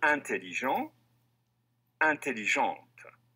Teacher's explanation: The final consonant of the masculine form is silent, but it's pronounced when you add the E to form the feminine.